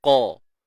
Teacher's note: Huruf qaf tebal selamanya. Okey. Huruf isti'la kan. Terangkatnya pangkal lidah.